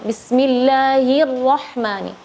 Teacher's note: Jadi ra enggak bismillahirra. Jadi harusnya lebih jelas lagi getaran huruf ra-nya.